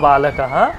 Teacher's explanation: বিসর্গটাকে মনে রাখার জন্য আমরা বিশেষ ক্ষেত্রে কিন্তু হ এর মত উচ্চারণ করি